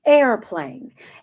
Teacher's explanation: you hear that little attack on the onset of that word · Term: glottal attack